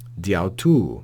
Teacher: they drop the alpha at the end of dia and simply read this prepositional phrase as diautu, diautu, almost as one word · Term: euphony